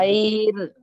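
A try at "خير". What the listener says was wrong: नहीं, खा बारीक नहीं, खा भी जो है उर्फे मुस्तालिया में है तो उसको मोटा पढ़ेंगे। खैर, खैर। आप काफ का मखरज अदा कर रहे हैं, जैसा समझ में आ रहा मेरे को। खा को जो है तारक के पास से बोलेंगे,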